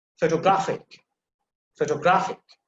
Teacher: you can see the stress is on the third syllable